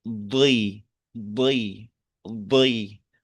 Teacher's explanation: Sehingga kasrohnya huruf Dod ini itu masih mengandung sifat tebalnya.